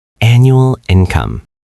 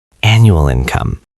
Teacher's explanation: Notice how the L sound at the end of annual connects right into the I sound of income. Aha. So it sounds almost like one long word.